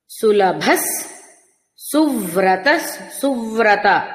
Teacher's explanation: సువ్రత వ ర సంయుక్తాక్షరం కాబట్టి అఘాత ప్రయోగం